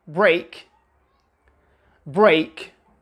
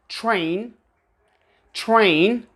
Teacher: we do pronounce the R sound if it is preceded by a consonant